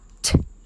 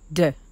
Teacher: It's a voiceless sound made as you push the air past your teeth and tongue. It's actually the same action as the D, but D is a voiced sound. You can tell the difference between the T and the D by placing two fingers lightly on the windpipe at the front of your neck.